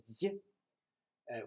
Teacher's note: GH at the start of a word when sender, yi, which is like an English Y, except the tongue's raised higher to the palate, so there's actually more blockage of the air, causing friction